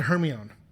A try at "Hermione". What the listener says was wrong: But the O is before. I can see how your brain would like fit it to make it sound.